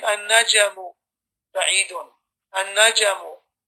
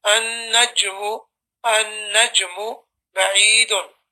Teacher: the Jim was being pronounced often like it has a fatha on it. Now, I do understand that when you read Jim in the Quran, it's going to have kalkala, but even that kalkala doesn't take the extent that it comes into a fatha.